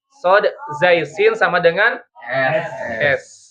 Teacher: Jadi ini ujung lidah berhadapan dengan ujung gigi seri depan bagian bawah ya.